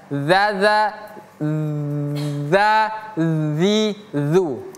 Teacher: ujung lidah bertemu gigi seri atas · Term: huruf zal